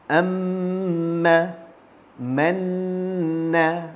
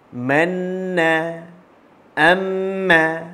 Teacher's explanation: tidak membunyikan mim sabdu dan nun sabdu dengan harakat yang tepat. Sepatutnya kita perlu membunyikan 2 harakat lamanya.